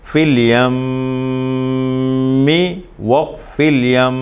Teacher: میم مشدد غنہ کریں گے وصل میں